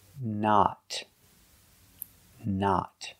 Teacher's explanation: use a stop T at the end and a short o